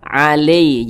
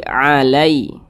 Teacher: ini cara bacanya itu dilunakkan jadi mudah. Jangan sampai ke huruf E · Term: huruf lin